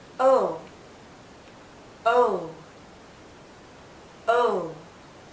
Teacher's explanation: our lips are very rounded but it's more open o think of the letter o o o but as we